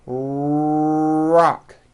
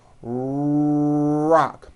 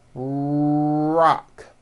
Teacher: notice how my lips are coming forward and my tongue moves back in my mouth and I push out the r sound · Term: American R sound